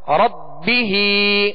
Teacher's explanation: کھڑا زیر ہے، اس کو ایک الف کی مقدار کھینچ کر ادا کریں گے کہ کھڑا زیر یا مدہ کے قائم مقام ہے.